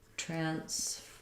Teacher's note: Transference, we have first syllable stress. There's our black cat vowel again.